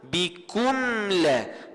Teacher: Nah, kena izhar, jelas dan nyatakan mim bertemu dengan lam. Kalau dia wakah situ bikun, tak jadi adalah izhar syafawi, hanya izhar sahaja.